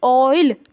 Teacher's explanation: ओ जो है वो आई की तरफ ग्लाइड करता हुआ यहाँ पर दिखाई दे रहा है, ठीक है। अब दो वॉवल, अब दो चीज़ें मिल गई तो इम्प्योर तो हो ही गया, जैसे दूध में पानी मिल जाता है तो इम्प्योर हो जाता है, क्लियर। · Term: ग्लाइडिंग वॉवल्स